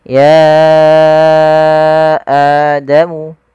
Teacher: Panjang untuk mad jaiz sendiri adalah 4 harakat atau 5 harakat. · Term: mad jaiz munfasil